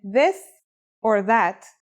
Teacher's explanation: pronunciation is a voiced sound the as in this or that it's pronounced with the tongue between the upper and the lower teeth